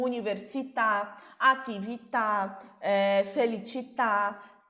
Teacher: uma série de palavras que terminam com vogal e terminam com a vogal acentuada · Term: palavras oxítonas